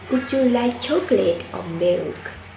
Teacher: In an alternative question, the tone rises on the first part of the question and falls on the last part afterward. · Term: Alternative questions